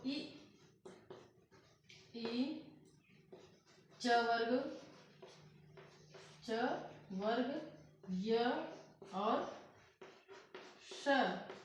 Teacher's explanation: तालु और जीभ के स्पर्श से बोले जाने वाले वर्ड, बोले जाने वाले मतलब जिन वर्णों के उच्चारण में तालु और जीभ का प्रयोग होता है वो कौन कौन से वर्ण हैं।